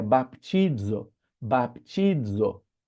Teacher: o Z, na verdade, é como se fosse um DZ ou um DS